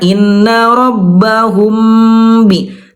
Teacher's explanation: cukup disentuhkan doang karena dia ikhfa tuh samar bibirnya samar · Mim mati bertemu dengan ba, ikhfa syafawi, itu bibirnya tidak betul-betul dirapatkan, ditekan. Tidak betul-betul ditekan seperti halnya mim bertemu dengan mim.